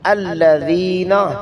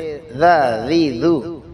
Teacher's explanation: ذال زبان کی نوک اوپر والے دانتوں کی نوک سے